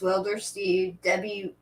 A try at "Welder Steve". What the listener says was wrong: Welder Steve. It sounds like you're saying Wilder Steve.